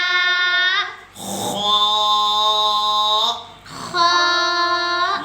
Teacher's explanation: موٹا کر کے اور خلق کے شروع سے ادا کریں